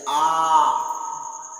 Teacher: जिन स्वरों के उच्चारण में मुख द्वार पूरा खुलता है वे विपरीत कहलाते हैं।